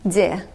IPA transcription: d'e